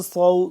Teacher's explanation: صاد سیٹی کی آواز اور صاد پڑھنا بھی موٹا ہے۔